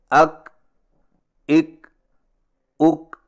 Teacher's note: اور کاف کی ادائیگی کا صحیح طریقہ یہ ہے کہ زبان کی جڑ کو تالو پر مضبوطی سے اس طرح لگائیں کہ آواز کے سختی سے رکنے کے فوراً بعد معمولی سی گھساہٹ ہو۔